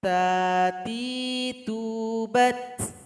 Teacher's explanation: Ketika sukun juga terasa bunyi hamasnya.